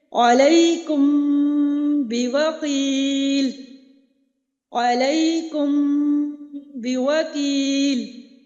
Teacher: میم ساکن کے بعد جب با آ رہا ہے تب بھی ہم نے غنہ کرنا ہے